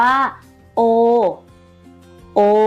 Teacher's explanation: สระโอเป็นสระเสียงยาวเด็กๆลองลากเสียงโอยาวๆค่ะถ้าลากได้ยาวเสียงไม่ผิดเพี้ยนนี่คือสระเสียงยาวค่ะ